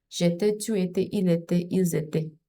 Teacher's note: So the singulars and the third person plural have the same pronunciation.